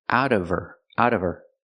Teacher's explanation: the H in her is silent because it's not a stressed word, so you hear out of her, out of her.